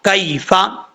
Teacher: یہ کاف جو ہے وہ باریک ہے، اس کو پر پڑھنے کی ضرورت نہیں ہے، اس کا مخرج ہے زبان کی جڑ اوپر والے تعلق کے سخت حصے سے لگے تو کاف پڑھا جاتا ہے۔ کیفا، یا لین ہے، اس یا کو لمبا کرنے کی ضرورت نہیں ہے، لونگ کرنے کی ضرورت نہیں ہے۔